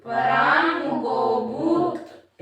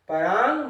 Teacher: इंगा का उच्चारण है तो ग नहीं आए